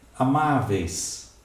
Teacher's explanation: eu vou ter o EI, que é um ditongo decrescente, continua com acento, mas com outra justificativa.